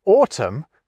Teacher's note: So in the case of the word autumn, we drop that ungainly N.